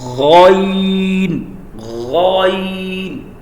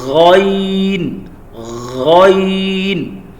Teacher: اب یہ بھی ہیوی ہے، جس طریقے سے ہم نے خا کو پروناؤنس کیا یہاں پہ حلق کے اوپر والے حصے سے سیم غائن بھی وہیں سے ہے